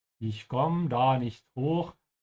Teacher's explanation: There's also a missing E here, very typical in German. Whenever you have a verb conjugated with ich that has an E at the end, in spoken German it's often dropped.